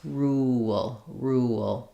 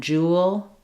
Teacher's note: because I'm going from the rounded oo to the unrounded o with the schwa and the l, I'm going to have a bit of a w sound connecting those. Rule. You can see that in a word like jewel, that we actually spelled that with a W, rule and jewel, very similar patterning as I'm moving from the oo to the L. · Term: vowel to vowel linking